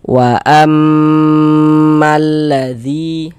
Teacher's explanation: Kita gunnahkan itu kita dengungkan. Jadi di bagian wa am itu suaranya itu kita tahan ya, kita panjangkan sejenak, kita gunnahkan. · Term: gunnah musyaddadah